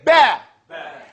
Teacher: The two lips coming together here is the place where you enunciate